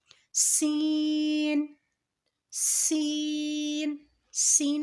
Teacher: سین، سین، سین بھی ہم پڑھیں گے زا کی طرح ہی، جس طرح ہم نے زا میں اسٹارٹنگ میں سختی سے پڑھا ہے، سیٹی کی آواز آئے گی، اسی طریقے سے سین بھی ادا کیا جائے گا، اسٹارٹنگ میں سیٹی کی آواز آئے گی اور سختی سے پڑھا جائے گا